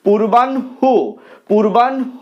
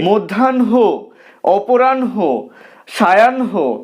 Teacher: হটা আগে রয়েছে ঠিকই, কিন্তু নটা আগে উচ্চারিত হচ্ছে, হটা পরে উচ্চারিত হচ্ছে।